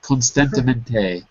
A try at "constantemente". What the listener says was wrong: Good pronunciation.